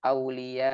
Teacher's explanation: di akhir dinaikkan sedikit suaranya agar jelas di situ ada hamzahnya karena jika tidak demikian hamzahnya seakan-akan tidak ada contohnya Aulia jadi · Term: hamzah sukun, nabr